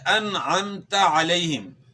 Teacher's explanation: عین کی آواز گلے کے درمیان سے ادا کرنی ہے